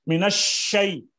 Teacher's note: اس میں یہ شین کی جو آواز پھیلی ہے تفشی سے کہتے ہیں